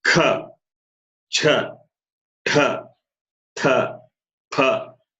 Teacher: huge amount of air is expelled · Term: aha prana